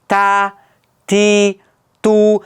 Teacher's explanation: Ta harfini talaffuz qilayotganimizda til orqasi ochiq bo'ladi. Shuning uchun bu harfimiz ingichka bo'ladi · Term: istifola